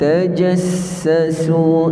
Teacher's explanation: Jadi sin itu ada sifat yang kita panggil sebagai as-safir, dan dia juga ada sifat sebagai rakhawah, yang perlu kita beri tempoh sedikit. Kerana bila kita sebut sin, makhraj kita tak tutup rapat, jadi suara kita keluar berjalan okay